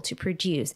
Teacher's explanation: In this case, to produce, it's a verb. So we have the stress in the second syllable to produce